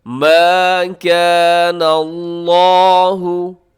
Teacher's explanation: لفظ اللہ کو آپ پر رکھیے گا، موٹا رکھیے گا